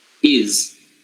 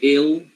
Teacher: The reason why the vowel becomes longer here is because the voicing of the next consonant makes the voicing of the first vowel longer. So it kind of like gets attached together.